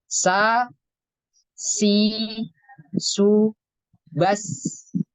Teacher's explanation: jelas karena ketika kita mengucapkan huruf Za mulut kita terbuka Za untuk huruf Sin juga sama sifatnya itu infitah terbuka sa si su bas